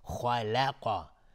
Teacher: خلقا دیگه لام رو غلیظ تلفظ نمی کنیم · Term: ترقیق